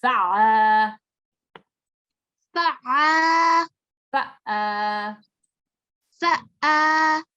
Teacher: this is softly pronounced from the middle of the throat and is one of the typical sounds of the Arabic language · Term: Ain